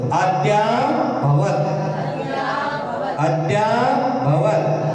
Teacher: या को बढ़ा दो, द को छोटा कर दो, या को बढ़ा दो।